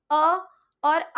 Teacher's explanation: अ और आ बोलते समय आपके कंठ से एक हल्का सा कंपन होगा और इसीलिए अ और आ का उच्चारण स्थान कंठ से माना